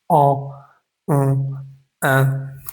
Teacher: Esos no existen en español. Entonces se pronuncian dejando salir un poco el aire por la nariz y por la boca al tiempo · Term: nasales